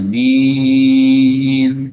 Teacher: a-nya jangan terlalu panjang, dua harokat saja. Nah yang panjang minnya